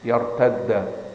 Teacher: فعندما أدغموا الدال في الدال أصبحت مشددة